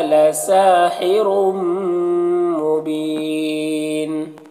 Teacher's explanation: را کے اوپر دو پیش ہے تو را کو پر پڑھیں گے اور یہاں پر تنوین کے بعد میم حروف یومن میں سے تو ادغام ناقص ہوگا، غنہ کے ساتھ میں پڑھیں گے اور یہاں پر وقف کی صورت میں مد عارض وقفی ہوگا تو اس طرح سے پڑھیں گے۔